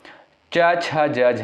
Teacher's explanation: इनका उच्चारण साथियों हो जाएगा तालु से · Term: च वर्ग